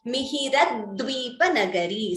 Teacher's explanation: The d is doubling here in Dvipa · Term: dvitvam